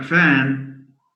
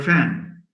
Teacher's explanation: those who don't have the v sound tend to replace it by a f sound.